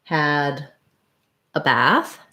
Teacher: in bath we have the black cat vowel um it's the lax front vowel · It's the lax front vowel, black cat